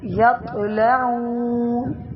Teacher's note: تا جو تو ہے وہ موٹی اور جھٹکے والی